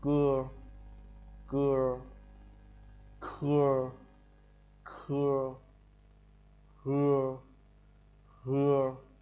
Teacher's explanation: Khi phát âm, cuống lưỡi đưa lên phía hàm ếch mềm thì chúng ta đưa cái cuống lưỡi, đưa cái lưỡi vào cuống lưỡi nhá, gần cuống lưỡi. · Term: nhóm âm cuống lưỡi